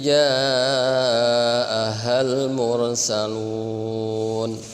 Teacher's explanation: Nunnya terakhir, mursalun. Nah, nunnya yang asalnya berharokat dibaca sukun. Nah, maka dibaca mad ya. 5 sampai 6 harokat. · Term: mad arid lis sukun